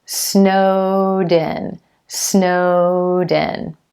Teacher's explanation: My voice never stops between the two words.